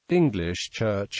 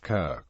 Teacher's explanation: Anglo Frisian brightening and palatalization of K